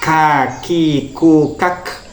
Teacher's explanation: Selanjutnya adalah yang nomor 6, yaitu makhraj pangkal lidah yang agak ke depan mengenai langit-langit, dan ini makhrajnya huruf kaf